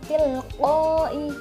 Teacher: cara membacanya yaitu dengan berdengung dengan mendekati bunyi nun, lalu suaranya ditahan dengan 2 ketukan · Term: ikhfa